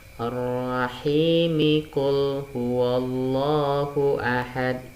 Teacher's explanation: hi-nya ini berubah menjadi mad tabi'i, jadi 2 harokat ya. Ar-Rahimi qul huwallahu ahad, tidak boleh lagi dibaca mad arid disukun karena dia diwasol ya.